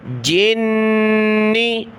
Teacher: جیم کو نون کے ساتھ ملایا، نون پر غنہ ہوگا